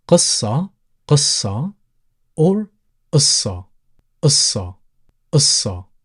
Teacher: the letter qaf, sometimes people pronounce it qaf, which is pronounced from the back of your throat, or sometimes people tend to replace it with a glottal stop, as in the first sound in the letter A.